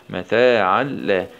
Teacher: شدة فتحة تاء فتحة تاء متى ألف صغيرة مضي طبيعي متى عين فتحتين مع الإدغام من غير غنة في اللام المشددة مع الفتح